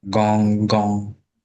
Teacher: So in Yoruba, it's more, the N is more in the back of the throat so that it has that nasal sound